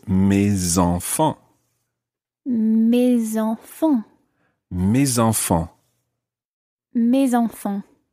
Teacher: So normally the S is silent. But when it's followed by a vowel, it becomes mes, in this case, mes enfants.